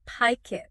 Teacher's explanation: The K sound at the end of pick jumps over to the I in it. So it sounds like pike it. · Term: link